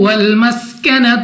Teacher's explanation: لال کو ہم نے نرمی کے ساتھ ادا کرنا ہے، سین کو ہم نے سختی سے ادا کرنا ہے، یعنی سیٹی والی آواز کے ساتھ